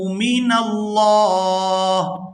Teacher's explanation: لفظ اللہ کے لام کو پورا ادا کریں گے کیونکہ اس سے پہلے زبر ہے